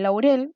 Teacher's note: se conforma la mezcla entre la vocal abierta y la vocal cerrada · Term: diptongos